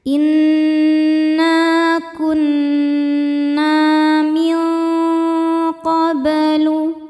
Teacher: inna kunna min qoblu min ada hukum ikhfa hakiki yaitu ikhfa hakiki ab'ad karena nun sukun bertemu dengan huruf qof. Cara bacanya nun dibunyikan samar-samar menuju makhraj qof disertai bunyi dengung. Nah, suara yang masuk hidungnya banyak atau dengungnya banyak karena qof makhrajnya jauh dari nun.